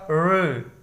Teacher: मूर्धा क्या है, जीभ पीछे की ओर मुड़ जाती है